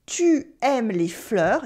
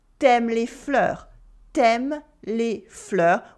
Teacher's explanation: In everyday spoken French, we often cut the u when it comes before a vowel.